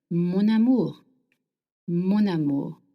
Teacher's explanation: if you want to call someone my love in French we link words together. So amu starts with a vowel and m ends with n.